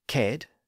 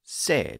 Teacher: the hard k sound at the beginning of that root word K was softened into an S sound